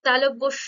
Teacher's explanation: জীবটা গুটিয়ে ছোট হয়ে উপরে তালুতে হালকা ঠেকছে